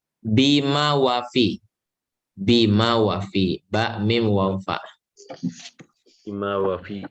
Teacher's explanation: Ba dan mim sama-sama kedua bibir dirapatkan. Wau kedua bibir tapi dimonyongkan.